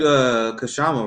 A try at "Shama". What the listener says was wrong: Shama? The K is silent.